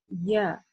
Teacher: при произношении этой буквы у нас задействуется середина языка. Да, середина языка, то есть махрадж. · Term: буква «Я»